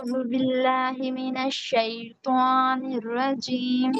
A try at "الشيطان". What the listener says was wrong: شعی ہوگا نا بیٹا. شعی. اس میں واؤ نہیں ایڈ.